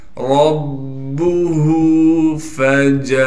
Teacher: रा को मोटा करके पढ़ना है। रा को बा से मिलाएंगे इसलिए कि बा पर तशदीद है।